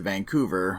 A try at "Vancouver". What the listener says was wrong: Your Canadian accent was not hard enough when you said Vancouver.